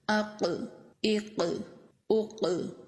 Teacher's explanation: یہ زبان کی جڑ تالو کے نرم حصے کو ٹچ کر رہی ہے۔ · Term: قاف کا مخرج